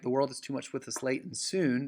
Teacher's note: the stress is placed on world, to, with, late, and soon. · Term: iambic lines